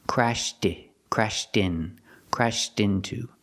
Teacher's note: Now we hear the T sound in crashed because the next word is a vowel. And when you link them, you have to pronounce the T sound. It doesn't disappear.